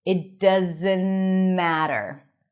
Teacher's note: So here you can even drop the T in doesn't.